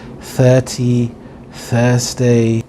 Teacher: The unvoiced TH is made with air, and generally it's at the beginning of words such as 30, Thursday.